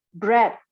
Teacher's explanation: Jadi ada be, ada kombinasi be, re, kemudian vowels, and another consonant. So you have plosive, a bilabial plosive, followed by a liquid, followed by a vowel, followed by another consonant.